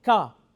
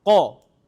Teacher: the kaf is in front and the qaf in the back, and the more I come back, the more it sounds like a qaf